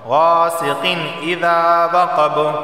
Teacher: غاسقین تنوین کے بعد حمزہ آیا ہے اور حمزہ حروف حلقی میں سے ہے تو صرف اظہار ہوگا، غنہ نہیں ہوگا